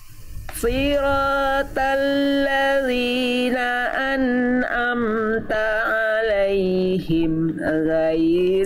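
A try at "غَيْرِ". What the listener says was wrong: Huruf fathah itu basicnya A. Huruf ghain itu dia terdengarnya tapi tidak seperti condong pada vokal A, tapi condong pada vokal O, tapi bukan sengaja di O kan. Tapi pangkal lidahnya diangkat, bukan ghairi.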